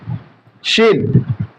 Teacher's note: জিহ্বার মধ্যখান, জিহ্বার এই যে এটা হচ্ছে জিহ্বার মধ্যখান, তার বরাবর উপরে আবার তালুতে লাগিয়ে দিতে হবে।